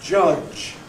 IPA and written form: ʤʌʤ (judge)